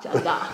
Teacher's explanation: You kind of drop the R at the end and emphasise the A.